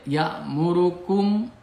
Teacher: mim mati menghadapi alif ini dibaca jelas. Ya'murukum ang ini ikhfa. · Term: idhar sapawi